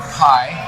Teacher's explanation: Pie, if you put your, as really an audio technician will tell you, if you put your hand in front of your mouth, pie is accompanied by a large puff of air